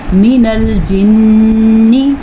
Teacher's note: نفر من الجن، ادغام بالغنہ کی وجہ سے میم پہ غنہ ہو رہا ہے اور نون پہ شد کی وجہ سے بھی غنہ ہو رہا ہے